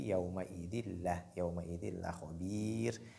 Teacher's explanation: Il y a ce qu'on appelle al-idgham bi ghayri ghunna. Donc, il faut introduire le tanwin dans lam, mais sans pour autant faire la nasalisation · Donc, on dit yawma idil la khabir. Et la lettre ra à l'arrêt, elle est légère ici. Donc, il y a muraqqaqa, elle est légère.